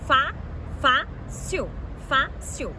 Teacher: E foi acentuado porque é uma paroxítona terminada em L. Então, paroxítona, penúltima sílaba tônica.